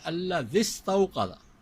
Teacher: سین بھی ساکن، یا بھی ساکن، اس یا کو نہیں پڑھیں گے، پڑھیں گے الذی استوقد.